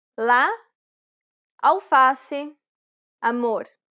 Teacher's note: This vowel sound is very similar to the A in father. This vowel sound is considered an open A sound because the jaw is low and the mouth is wide and open.